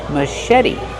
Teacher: the T is a fast T because it's between vowels.